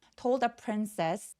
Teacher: 자음이 한꺼번에 많이 뭉쳐 있고요 d하고 더의 th가 혀의 위치가 굉장히 가까워요. 그래서 told 중간에 뒤발음 삭제하셔도 좋습니다.